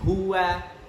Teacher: H itu makharijul hurufnya adalah al-halq atau tenggorokan